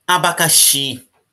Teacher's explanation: Última sílaba é mais forte